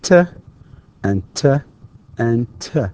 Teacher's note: the t is considered voiceless, meaning that the vocal cords do not vibrate